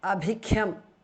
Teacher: Bha and khar mahapranaha.